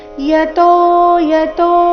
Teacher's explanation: ಯತೋ ಯತೋ ಎರಡು ತೋ ದೀರ್ಘ ಬರಬೇಕು